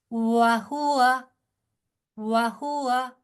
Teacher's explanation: ठीक है, वाह की प्रैक्टिस अगर आपने वाव की प्रैक्टिस करनी हो तो शीशे के सामने देखें, जितने खूबसूरती से आपके होंठ गोल होंगे उतना अच्छा वाव अदा होगा